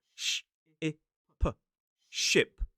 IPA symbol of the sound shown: ʃɪp